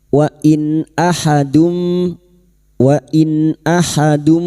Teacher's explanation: Nun sukun bertemu hamzah idhar halki. Nun sukun dibaca jelas tanpa mendengung.